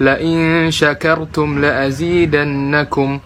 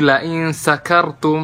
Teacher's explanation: kalau orang baca Shin enggak jelas malah jadi Sin